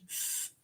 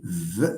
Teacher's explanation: So f is a voiceless labiodental. V, let me see, v, there is vibration, so it's a voiced labiodental.